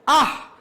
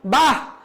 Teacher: বিস্ময় সূচক অব্যয় পদে বিসর্গ থাকলে হ উচ্চারিত হয়।